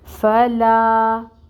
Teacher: الف ساکن ہے اور اس سے پہلے لام کے اوپر فتحہ کی حرکت ہے، لا پر الف مد ہو رہی ہے۔ الف مد ہوگی تو اس کو 1 الف کے برابر کھینچیں گے، یعنی 2 کاؤنٹس لمبا پڑھیں گے۔ فلا، لیکن یہاں پر آگے لام کے ساتھ ہمیں قوف کو ملانا ہے، تو اب 2 کاؤنٹس لمبا نہیں پڑھیں گے، لام کو قوف کے ساتھ ملا دیں گے۔